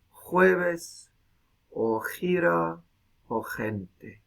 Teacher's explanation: un sonido velar fricativo sordo que muchas veces se hace más fuerte más bien ubular y